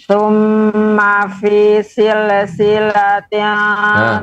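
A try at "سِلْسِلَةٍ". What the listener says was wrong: Lam yang sukun tidak boleh memantul silsilatin. Ini karena tidak dipaskan bacaannya, sil berhenti. Jadi habis. Summa fi silsilatin.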